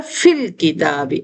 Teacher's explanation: الف حمزہ وصل جو ہے وہ گر جاتا ہے